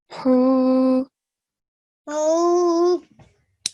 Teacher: for big ha, we know the sound comes from middle of the throat